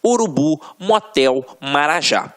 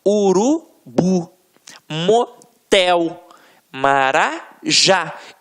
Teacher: a pronúncia da última sílaba ficará mais forte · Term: oxítona